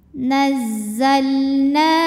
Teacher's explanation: thii dahiri sebab ada Alif didahului harakat fathah cara bacanya na nunnya panjang dua harakat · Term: Mad